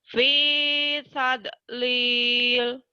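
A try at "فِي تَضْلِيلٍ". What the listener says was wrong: Jangan ada dieukan. Jangan ada e-nya. Fi tadlil, tadlil. Nanti e-nya dihilangin.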